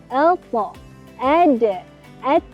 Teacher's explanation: Hujung lidah bertemu pangkal gigi seri atas.